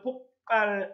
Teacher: 기역 받침 때문에 뒤에 비읍은 뿌가 됐죠